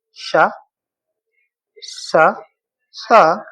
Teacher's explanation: ये तीनों ही स अपने आप में अघोष होते हैं